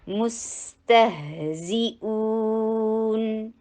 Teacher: मीम के ऊपर दम्मा, होंठों को गोल कीजिए, सीन के ऊपर आते ही होंठ नॉर्मल पोजीशन में आ जाएंगे